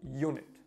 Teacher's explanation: The word starts with the vowel U, however, it's pronounced with a Y sound, so unit, making it a consonant.